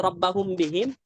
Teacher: jadi dibaca tipis ya Jangan dibaca tebal gunahnya